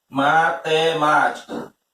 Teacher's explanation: Proparoxítono, a palavra com a antepenúltima sílaba tônica.